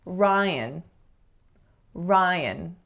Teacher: the strongest syllable you can hear is the first, and then the second syllable has to be schwa.